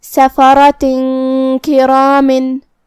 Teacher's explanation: काफ हुरूफ इख्फा में से है, तो हम ये हुक्म को गुन्ना के साथ अदा करेंगे। सफ़रतिन किरामिन।